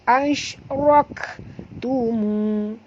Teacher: Kaf tak tebal, yang tebal ra